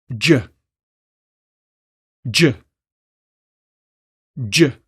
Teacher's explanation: the J is an affricate sound so it's important to completely stop the air in your mouth and then immediately release it with friction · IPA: dʒ